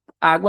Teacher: Água, no caso, é uma paroxítona por conta que água, a sílaba tônica tá no A